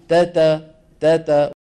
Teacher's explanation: هي مهموسه فيها شيء من الهمس لكن ضعيف ضعيف